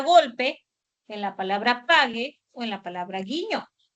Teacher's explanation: el caso de la oclusiva velar sonora, que puede ser representado por la letra G o por el dígrafo GU, por ejemplo, en la palabra golpe, en la palabra pague o en la palabra guiño.